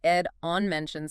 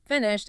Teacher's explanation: the ed on mentioned sounds like a d, but on finished it sounds like a t